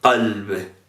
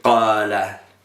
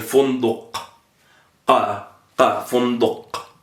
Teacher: Es uvular, ¿no? Se pronuncia como con la campanita.